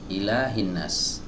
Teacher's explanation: Ya, ayat ini dimulai dengan huruf hamzah, dibuka dengan huruf hamzah. Ya, huruf hamzah ini adalah huruf yang dikeluarkan dari pita suara, ya, atau di tenggorokan bagian bawah. Ya, di sebagian kitab-kitab tajwid disebutkan tenggorokan yang paling jauh.